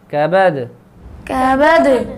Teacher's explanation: یہاں پہ دال پہ قلقلہ ہوگا